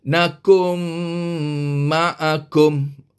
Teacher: dengan mim kita tadi dengar apabila nun mati bertemu dengan mim maka kita kena masukkan bunyi Nun ke dalam bunyi mim bunyi Nun hilang cuma dengar bunyi mim sahaja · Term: idram dengan dengung, idgham bigunnah